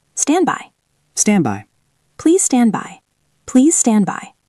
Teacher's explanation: It ends in ND. If I say stand by, I have NDB. That is awkward, so we drop the D.